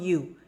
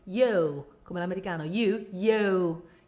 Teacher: la U quando cambia e quando sganciamo e quando la modifichiamo diventa più, c'è un po' di O dentro, no? È più, tipo yo, non you, yo, come l'americano, yo, yo, tecniche americane chiaramente.